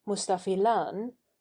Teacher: long, long, short, long, with an overlong final syllable